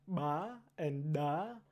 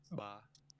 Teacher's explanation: So Swahili and Vietnamese have sounds such as ba and da, where the airflow briefly, you're not producing it necessarily while you're breathing in, but air rushes into your mouth as you're producing the consonant, as opposed to normally airflow is leaving your mouth and the airflow is stopped with higher pressure inside of your vocal tract compared to the outside, whereas this is the opposite. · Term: implosive consonants